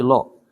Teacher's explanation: Lamnya dia tafkhim bunyi o, jangan la tapi lo.